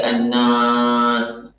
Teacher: Dia menyeret sifat gunnah yang ada pada huruf sebelumnya diseret ke alif. Sehingga alifnya terdengar ada gunnahnya.